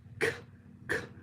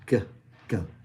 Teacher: The velar, we have the k, k, which is voiceless. It's that acoustic air coming up through, versus g, g, it's voiced.